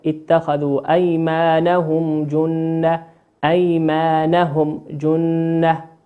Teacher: الميم في أيمانهم ميم ساكنة، أتى بعدها حرف الجيم، وقلنا الجيم من حروف الإظهار · وأما بقية الحروف الهجائية فهي من حكم الإظهار الشفوي، ويسمى إظهارا شفويا لخروج الميم الساكنة المظهرة من الشفتين